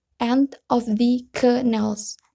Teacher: Nals-nya itu nadanya rendah